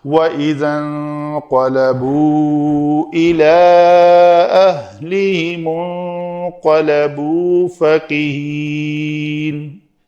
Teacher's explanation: واو مدہ ہے، محل مد آ گیا، اس کے بعد حمزہ آ رہا ہے، تو یہاں پہ اس کو ہم لمبا کریں گے، یہ مد ہوگی یہاں پہ۔